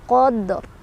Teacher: Karena fathah di atas, maka ro-nya ikut tebal